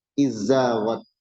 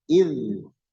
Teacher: Dileburkan nggak boleh. Tapi jelaskan dulu zalnya.